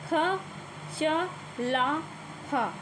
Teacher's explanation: ला जब बोल रहे हैं दोस्तों तो हमारी जीभ जो है दांत से लग रही है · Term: दंत ध्वनि